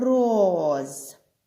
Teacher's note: перший звук м який він за вимовою приголосний так твердий